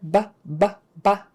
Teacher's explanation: It's a very forceful sound. It's like a stop sound.